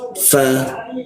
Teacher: Fa, bibir bawah bertemu gigi atas.